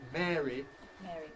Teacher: I would say that I most readily use ɛː, if at all, before r and another vowel. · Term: monophthong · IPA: ˈmɛːri